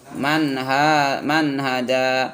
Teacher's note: nun sukun bertemu dengan ha, jadi nunnya baca jelas, man hada, jangan dibaca man hada, salah.